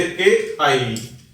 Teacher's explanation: जिनका उच्चारण कंठ तथा तालु से होता है, उन्हें कंठ तालव्य वर्ण कहते हैं